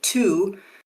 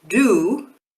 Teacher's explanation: So in T, your vocal cords, which you can feel here around your Adam's apple, they don't do anything. But for the D sound, they vibrate. So to, you should really, if you try and touch your Adam's apple and you say to, you should feel that the vibration only comes on for the oo sound. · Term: voicing